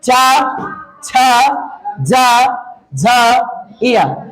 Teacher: यानी सारे वर्ण का उच्चारण स्थान क्या होगा? तालु होगा।